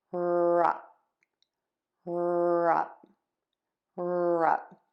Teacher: we are actually going to close the lips at the end for that P